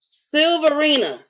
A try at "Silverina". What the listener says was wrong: You You added a A. You didn't need to add another A.